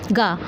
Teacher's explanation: गा यहाँ पे अल्प प्राण है।